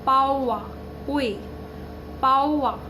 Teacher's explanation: অন্তস্থ বয়ের প্রভাবে ওয়ে ধ্বনির আগম হয় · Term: বশ্রুতি